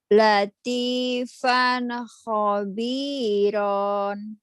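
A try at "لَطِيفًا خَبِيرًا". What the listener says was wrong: ronnya jangan ditahan. Latifan khabiran. Latifan khabiran.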